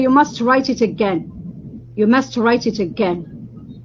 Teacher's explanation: This is order. With falling intonation. It's not with rising.